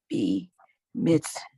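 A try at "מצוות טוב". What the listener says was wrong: Not B.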